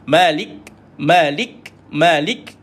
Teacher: iaitu angin keluar dia ada kaedah iaitu Malik jadi ada KS matikan k baru keluar angin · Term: bunyi hamas